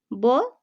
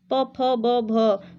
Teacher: ब का उच्चारण करने में हम ओष्ठ से इसका उच्चारण कर रहे हैं ब, तो ये जो है आपका ओष्ठ ध्वनि होता है।